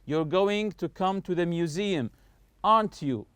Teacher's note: Your voice goes up when we check information. So, if the question tagged here, main goal is to check for information in the tag, your voice will rise up. · When I say aren't you, notice my voice is going higher here. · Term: rising intonation